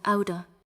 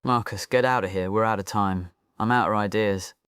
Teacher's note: Out of said fast, the T from out connects with of, and of almost disappears into a softer sound, outa.